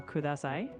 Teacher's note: In Japanese, the D sound is always a clean D, like in dog. There's no TH sound like in this.